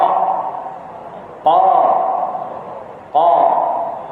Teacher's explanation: Qa dengan pangkal lidah terangkat. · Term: sifat isti'la